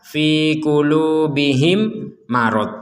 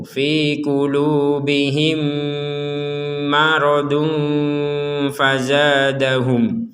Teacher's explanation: mim yang pertama dimasukkan kepada mim yang kedua atau seakan-akan mim pertama ini sudah ditiadakan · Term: dengung